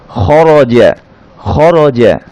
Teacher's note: জিমে বাতাস বন্ধ থাকবে